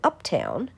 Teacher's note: But in uptown, the rhymed part of the word is actually unstressed. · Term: imperfect rhyme